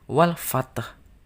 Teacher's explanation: Jadi ada huruf H yang tersimpan yang harus keluar bunyinya meskipun hanya kecil bunyinya.